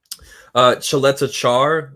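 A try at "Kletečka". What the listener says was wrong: Kletekar. Kletekar, not Chaleta. Chaleta. There's no CH there. It's Kletekar. Kletekar.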